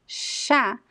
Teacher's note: if you place your hand here and you pronounce the word sha there is no vibration of the vocal cords